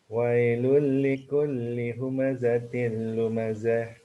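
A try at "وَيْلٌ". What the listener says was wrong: Tadi udah jelaskan, ya kalau mati baris atas dilembutkan wai, bukan wae.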